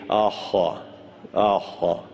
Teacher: the Pharyngeal H is different than our English H. It's pronounced very gutturally in the pharynx.